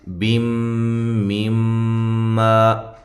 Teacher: بیم، میم ما، یہ نون تنوین کا ادغام ہے مع الغنہ، اور یہ میم مشدد پہ غنہ ضروری ہے. ما الف مدہ ہے.